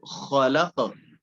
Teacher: ये जो खरखराहट है ज्यादा नहीं करनी, अगर आप ये नहीं करते, खरखराहट पैदा नहीं करते तो हा बन जाता है